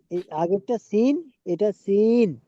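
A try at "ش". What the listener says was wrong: না, প্রথমটা হলো সিন মানে সিটি হবে সিন, আর এটা হলো শিন। শিন। শিন।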